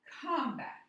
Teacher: vowel consonant consonant vowel we break it between the two consonant and the first vowel is stressed